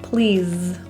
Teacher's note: The S in please is voiced like a Z.